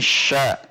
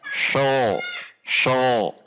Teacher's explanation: Pangkal lidah rileks, posisi di bawah atau turun. Perhatikan, ini adalah pangkal lidah berada di bawah. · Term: al-istifal